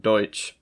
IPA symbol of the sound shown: tʃ